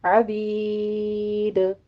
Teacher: عبید میں عین وسط حلق سے ادا کرتے ہوئے یا مدہ کے بعد ہم وقف کر رہے ہیں تو دال ساکن ہو جائے گا، یہاں پہ دال کا قلقلہ کریں گے